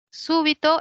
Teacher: Súbito es una palabra esdrújula. Quiere decir que la mayor fuerza de voz está en la antepenúltima.